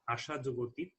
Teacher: এখানেও আ এবং অ মিলে আ স্বরধ্বনিতে রূপান্তরিত হয়েছে আশাতীত শব্দে